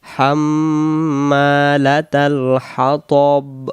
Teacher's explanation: এই জায়গায় আমরা অনেকে বলি ওয়া আমরা, ওয়া আমরা বা ওয়ামরা, রা হবে না, ওয়াম র, ওয়াম র, আম হবে না কিন্তু, ওয়াম ওয়াম ওয়াম, ওয়াম ইম জবর ওয়াম, র আতুহু হাম্মালাতাল হাতব, হাম্মা, মিমের উপরে তাসদিদ গুন্না হবে, হাম এমন হবে, হাম্মালাতাল হাতব।